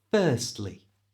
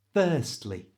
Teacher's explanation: To say this correctly, don't pronounce the R.